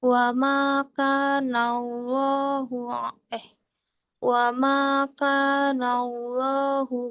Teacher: Ya, tebalkan lafaz jalalanya.